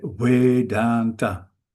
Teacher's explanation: The V is pronounced softly, gently, something between a V and a W.